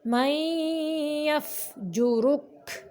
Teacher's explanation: من یفجرک، کاف باریک پڑھیں گے، ادھر ادغام ہو رہا ہے، آواز کو ہم ناک سے نکالیں گے